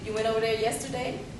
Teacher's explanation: in african-american english you don't need to have a rise